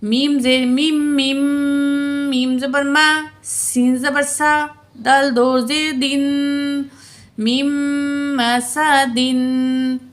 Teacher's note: میم کی زیر کو میم مشدد سے ملائیں گے اور میم مشدد میں غنہ کر کے پڑھیں گے